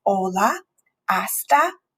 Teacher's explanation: So we've noticed hola, hasta, I. So we do not pronounce the H at the beginning of the word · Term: silent